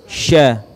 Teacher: ya rukhshah menyentuhkan tengah-tengah lidah kita di langit-langit ya sya ya huruf Syah mempunyai sifat tafasyi yaitu menyebarnya udara